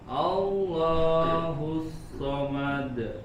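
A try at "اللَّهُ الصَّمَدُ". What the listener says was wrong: Seperti masih ada jeda sedikit pada qalqalahnya. Langsung Allahus samad. Samad langsung mantul.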